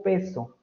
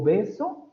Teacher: oposición que se da por ejemplo entre el rasgo sordo y el rasgo sonoro de estas dos consonantes